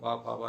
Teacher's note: दोनों ओठ नहीं मिलेंगे तो पा फा बा इत्यादि का उच्चारण नहीं होगा